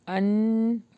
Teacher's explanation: یہاں پہ غنہ ہو رہا ہے، یعنی اخفا ہو رہا ہے لائٹ